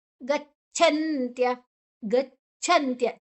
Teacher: ಚ ಅನ್ನ ಗದ ಒತ್ತಿಗೆ ತಕೊಳ್ಳುವ ಅದು ಅಲ್ಪಪ್ರಾಣ ಅದರ ಅಡಿ ಒತ್ತು ಛ ಮಹಾಪ್ರಾಣ ಇದೆ